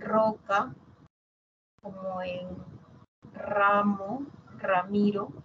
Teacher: Una sola, es la simple. La múltiple, cuando empiezan las palabras y a veces intervocálica también